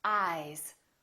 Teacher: the vowel that comes before the voiced sound is longer